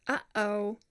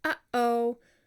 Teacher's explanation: it's the interruption of the breath stream during speech by closure of the glottis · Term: glottal stop